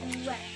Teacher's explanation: Pada kata topi, fonem T dilafalkan lepas. Namun jika berada di akhir kata, fonem T tidak diucapkan secara lepas.